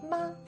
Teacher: The first tone is high and light